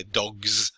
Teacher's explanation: Also, one of the interesting things about when you make something a plural, if it ends in a voiced consonant like g, you would say the S would be pronounced z, so you say dogs, because G is voiced.